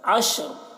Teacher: سے پہلے زبر ہے، تو عشر اس طرح پڑھیں گے، عشر، را کی آواز ظاہر ہوگی، را کو پر پڑھیں گے